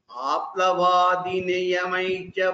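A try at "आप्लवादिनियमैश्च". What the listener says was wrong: so here द विसर्गास् यमैः यू have to give द विसर्ग and लीव it यू are not giving द विसर्ग in द apt वे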